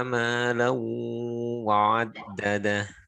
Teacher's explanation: Dengung, melebur ke huruf setelahnya dengan dengung. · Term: Idgham bigunah